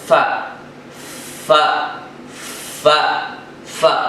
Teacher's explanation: نچلے ہونٹوں کے اوپر کے دانتوں کے کناروں سے لگا کر فا ادا ہوتا ہے